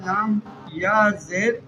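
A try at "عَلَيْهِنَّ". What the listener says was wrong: نہیں لام یا زبر ہے، ہاں۔ علی، ہاں ہاں۔ اب اس کو پڑھیں گے اس طرح، علیہن، ہاں۔ اب وقف کیجیے،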